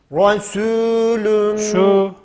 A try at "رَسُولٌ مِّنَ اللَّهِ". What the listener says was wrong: ü sesiyle değil. olunca ü oluyor.